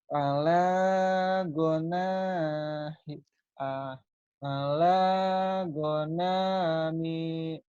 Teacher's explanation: Nggak ada yang panjang. Gonanya nggak ada yang panjang. Mi-nya doang ujungnya.